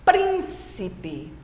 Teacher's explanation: É a palavra que tem a antepenúltima sílaba tônica, a mais forte. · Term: proparoxítona